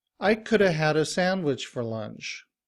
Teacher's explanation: to illustrate how the function words could have and had a get reduced in natural speech